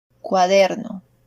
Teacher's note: in the case of the example word, the stress is in position number 2